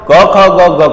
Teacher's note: ક ખ ગ ગ કંઠમાંથી ઉચ્ચારાય એટલે કંઠ્ય